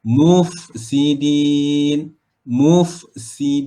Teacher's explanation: Mufsidin ni sifatnya adalah rokhawah. Fa kan sifatnya adalah rokhawah, mengalirkan aliran suara. Tak boleh tahan ya, alirkan terus.